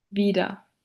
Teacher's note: The R, the R, becomes an A in word final position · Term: R vocalization